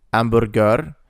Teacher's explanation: the H sound is silent in Italian.